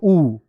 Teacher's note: होठ की आकृति जिसको बोलने में वृत्त बना देती हो उ वृत्त बन जाएगा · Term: वृत्त मुखी